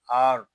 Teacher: یہاں را کو ہم پر پڑھیں گے کیونکہ را ساکن سے پہلے زبر آ گیا ہے